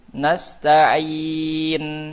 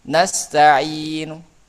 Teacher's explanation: Yang pertama dengan sukun nastain. Yang kedua dengan raum, nastainu.